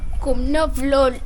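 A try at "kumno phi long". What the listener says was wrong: Kumno. He said kumno bilon. Bilon, like he used B. I think none of you got it right.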